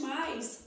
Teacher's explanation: O A, o O que é a vogal e o I é a semivogal. E no caso de mais, o a é a vogal e o I é a semivogal. Vogal a com a semivogal I.